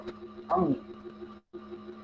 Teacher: आपलं जे नाक जे आहे ना त्या नाकातनं आवाज काढायचा अंग